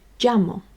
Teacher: if you go closer to Madrid in Espana they are more likely to pronounce it like a jit sound